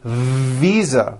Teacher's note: I said visa with an unvoiced F. I should have said visa with a voiced V.